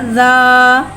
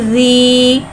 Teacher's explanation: ज़ाल नरमी वाला हुर्फ़ है, लिहाजा इसमें सीटी नहीं आएगी, इसको बगैर सीटी के अदा करके पढ़ेंगे।